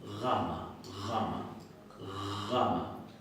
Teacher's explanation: La pronuncian un poquito más atrás y más suave que nosotros. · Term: G fricativa